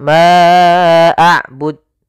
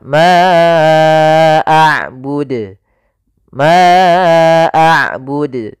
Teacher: huruf Dal salah satu sifatnya adalah Qalqalah mantul